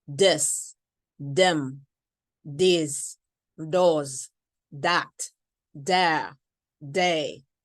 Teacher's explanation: Most of the time, they pronounce it as a D. Non-native speakers pronounce it as a D.